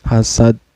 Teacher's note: Yang tadinya dal ini kan berbaris patah, terus karena berhenti di akhir ayat ya, dal ini disukunkan, maka ini dihukumi qalqalah kubro, qalqalah besar, artinya pantulannya besar ya